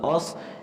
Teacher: یہاں بھی حمزہ پڑھیں گے، الف نہیں پڑھیں گے اور حمزے کے بعد صاد کو موٹا پڑھیں گے